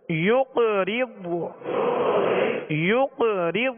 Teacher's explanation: یا قاف پیش یق را ضاد زیر رض یقرض یقرض. قاف پر قلقلہ کریں گے اور ضاد پر قلقلہ نہیں کریں گے. قاف کو بھی پر پڑھیں گے، قاف حروف مستعلیہ میں سے، اور ضاد پر قلقلہ نہیں کریں گے، ضاد حروف مستعلیہ میں سے، اس کو بھی پر پڑھنا ہے.